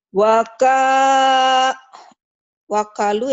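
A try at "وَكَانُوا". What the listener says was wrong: Wakanu, ya ini nun. Ini nun. Wakanu.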